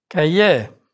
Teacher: R is not pronounced in words ending in IER, like Cahier